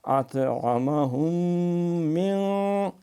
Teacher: میم کا میم میں ادغام ہے تو یہاں پہ غنہ بھی کریں گے، تھوڑی سی دیر بھی لگائیں گے